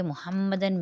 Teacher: میم پہ مشدد ہے، میم مشدد پہ 1 الف کی مقدار غنہ کریں گے